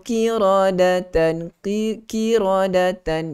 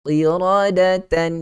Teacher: jangan sampai menghilangkan sifat isti'la pada huruf qaf.